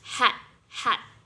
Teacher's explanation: You make it right at the larynx. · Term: glottal